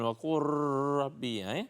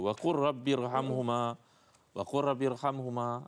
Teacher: Jadi apabila lam yang tidak berbaris pada perkataan kul bertemu dengan ra yang baris dan sabdu, maka nak dibaca dengan idgham tanpa dengung. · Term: idgham mutaqaribain